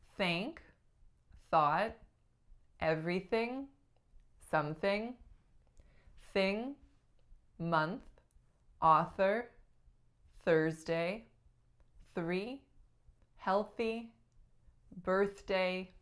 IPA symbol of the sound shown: θ